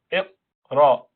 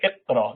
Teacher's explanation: Unless you bring that base of the tongue down to the neutral position, you cannot lift the front of the tongue to the palate, to the roof, to pronounce Ra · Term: Qaf Sakina